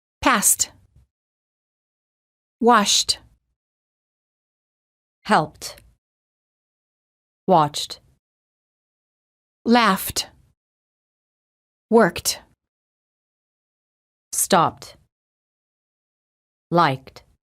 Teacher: If the last letter of the word ends in a voiceless consonant, the E is silent and the D is pronounced as T